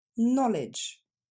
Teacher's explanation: Quand un mot commence en anglais par le contexte KN, on n'entendra pas le K, on n'entendra que le N.